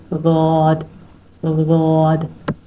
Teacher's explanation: زبان کی سائڈ دھاڑ کے ساتھ لگے گی اور گلے سے آواز آئے گی، ساؤنڈ نکلے گا، غاد ادا ہوگا، ٹھیک ہے.